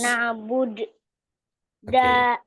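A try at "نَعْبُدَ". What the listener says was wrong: Ah enggak dong. Na'bud. Nab'bud. Bud itu aja bacanya.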